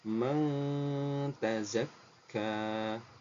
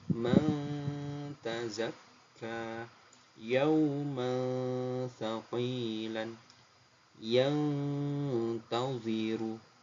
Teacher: Jadi yang dimaksud samar itu antara bacaan nun dan ta, itu ada di tengah-tengah suaranya ya. Itu yang dimaksud dengan suara yang samar. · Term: ikhfa hakiki